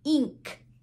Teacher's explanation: When we have I in front of the NK, where I am, it sounds like the long vowel E sound